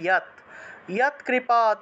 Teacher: যৎ কৃপা, বাংলায় বললে যৎ, সংস্কৃতে উচ্চারণ করব ইয়াত